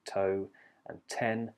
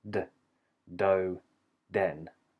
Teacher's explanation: the T is unvoiced like toe and 10 sudden release of air and then for the D it's voiced there's a sudden release of vibration